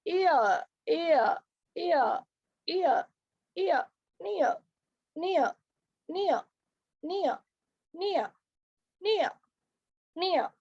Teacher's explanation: The lips are unrounded in the beginning and neutral in the end. · The glide begins from the centralized front just above half closed position and moves towards A.